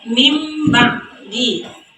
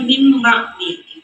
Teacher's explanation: Jadi cara membacanya mim ba'di. Karena nun mati atau tanwin tersebut diubah menjadi bunyi huruf mim. Nah, ini nun mati bertemu dengan huruf ba.